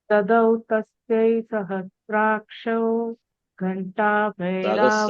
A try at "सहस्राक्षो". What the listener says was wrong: सहस्राक्षो, not सहस्राक्षौ. सहस्राक्षो.